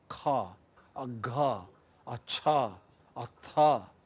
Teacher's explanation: The difference between ka and kha is that in the production of the speech sound k, we add an extra extra breath of air, extra puff of air, you know, immediately after the release of obstruction. Release of obstruction is essential for the production of plosive sound, but when you add an extra puff of air, it becomes aspirated.